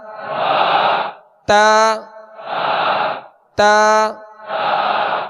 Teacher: زبان کی نوک اور اوپر کے دانتوں کی جڑ سے ادا ہوتے ہیں